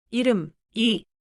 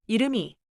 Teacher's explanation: A final consonant, 받침, is pronounced at the start of the next syllable when the next syllable begins with silent 이응. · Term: 연음